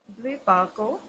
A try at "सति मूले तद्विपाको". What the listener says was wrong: नहीं, द्विपाको नहीं, तद विपाको।